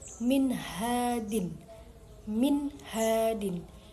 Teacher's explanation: nun dibaca secara jelas atau tidak dengung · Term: idhar halqi